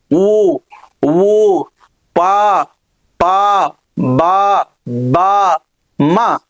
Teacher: ఊ ఊ అంటే ఇక్కడ చూడండి పెదవులు రౌండ్ చేసస్తాయి అన్నమాట ఊ ఊ ప బ అంటే ఇవి ఓష్టాల దగ్గర ఉత్పత్తి అవుతున్నాయి · ఇవి ఓష్ట్యాల దగ్గర ఉత్పత్తి అవుతున్నాయి కాబట్టి వీటిని ఓష్ట్యాలు అని అంటారు